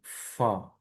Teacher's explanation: এফ এর মতো হলেও এটা সাউন্ডের উচ্চারণ হবে দুই ঠোঁট দিয়ে বাতাসটা বের করে দিবেন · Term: ফা সাউন্ড